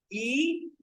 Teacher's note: during the production of this vowel, e, the front part of the tongue is close to the roof of the mouth.